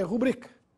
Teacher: a palavra é rubrica tem a sílaba tônica na sílaba bri portanto é uma paroxítona eí sem acento gráfico